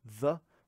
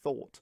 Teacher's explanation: the voiced dental fricative is found in the, whereas the unvoiced dental fricative is found in a word like thought